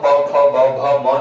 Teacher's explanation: ओष्ठ वर्ण की बात करें तो प फ ब भ म जब आप पढ़ रहे होंगे तो आपका जो मुंह ओठ होगा वो दोनों आपस में सटेगा, तो इसे युग ओष्ठ भी कहा जाता है, युगल ओष्ठ वर्ण भी कहा जाता है।